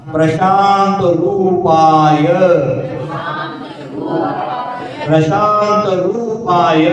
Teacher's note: अगर रू पर जोर देंगे तो आपका पा लंबा हो जाएगा, और रू को छोटा कर दो तो पा छोटा हो जाएगा, वहां गड़बड़ी हो जाएगी, स्वर व्यंजन में गड़बड़ी।